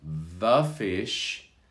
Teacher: because we have an f a consonant afterwards we can have a soft vowel sound there